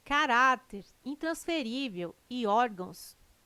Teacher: caráter intransferível e órgãos tem sua sílaba tônica na penúltima sílaba são paroxítonas